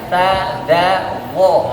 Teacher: Maka ketika mengucapkan ta, da dan vo, lidahnya keluar.